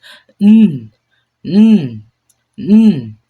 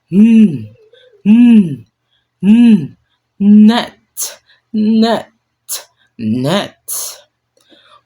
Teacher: Same tongue position, but you need to close the mouth and send air through the nose. It hums and it is also voice.